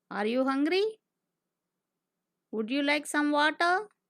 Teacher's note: The voice rises at the end of the sentences. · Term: Rising intonation